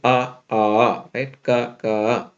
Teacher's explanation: the long one has exactly twice the length of the short one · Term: long and short syllables